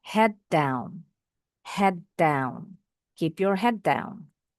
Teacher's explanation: Ada dua huruf D. Kita enggak pakai jeda. Bunyi D-nya seperti satu tapi agak ditekan.